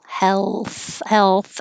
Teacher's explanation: i'm kind of pushing my tongue further forward already for the l